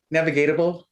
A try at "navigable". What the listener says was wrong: Just navigable. You used an extra syllable you didn't need to.